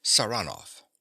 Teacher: he pronounces the name with a stress on the second syllable